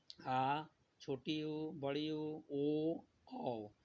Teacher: वह स्वर जिसके उच्चारण करते समय जीभ पीछे की ओर चला जाता है। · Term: पश्च स्वर